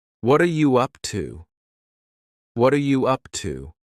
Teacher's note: the word what and are are creating a spoken contraction